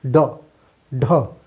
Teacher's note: उच्छिप्त व्यंजन में हम लोग देखे हैं कि जिह्वा मूर्धा को छू करके तुरंत वापिस आती है, जैसे ड, ढ।